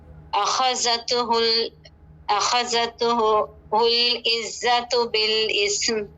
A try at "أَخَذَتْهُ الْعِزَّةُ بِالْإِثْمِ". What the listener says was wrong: أخذته اس طرح نہیں، جھٹکے نہیں دینا ہے، ٹھیک ہے. أخذته العزة بالإثم.